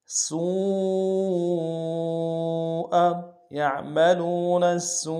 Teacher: دیں گے، یعملون السوء، سین کو واو کے سامنے لائیں گے، واو مدہ ہے، واو مدہ کے اوپر بڑا مد ہے، کم سے کم 3 مقدار میں کھینچیں گے ، حمزہ کو نون سے ادا کریں گے، سوء، یعملون السوء